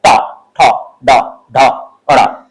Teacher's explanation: इसमें होता क्या है कि जीभ आपकी मुड़ेगी पीछे तरफ, उच्चारण करते समय जीभ आपको पीछे तरफ मुड़ेगी और झटके के साथ गिरेगी। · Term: मूर्धन्य